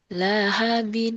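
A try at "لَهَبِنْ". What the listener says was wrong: Nggak ada yang panjang.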